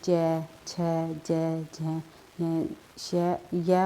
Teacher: जो हमारी जीवा होती है उसके आगे वाला भाग कठोर तालु का स्पर्श करता है, उन्हें तालव्य व्यंजन कहते हैं। जैसे कि च, छ, ज, झ, श, य और श भी जो है तालव्य व्यंजन के अंतर्गत आती है।